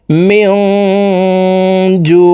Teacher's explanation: এই নুন সাকিনকে নাকের ভিতরে লুকাইয়া গুন্নার সহিত পড়ব